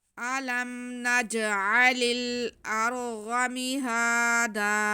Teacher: لام کو ہم نے آگے ملانا ہے کیونکہ لام جو ہے وہ آگے بھی لام ساکن ہے، تو لام کو ہم لام کے ساتھ ملا کے پڑھیں گے